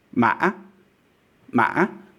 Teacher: in the middle there you have a glottal stop